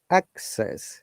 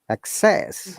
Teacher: when it is noun, we stress on the first part, access. Okay, when is verb, we stress the second syllable, access.